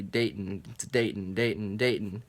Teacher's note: yeah cuz it's you know it's two syllables day in ton people always just say Dayton like without pronouncing the T Dayton to date and date and Dayton but I've learned to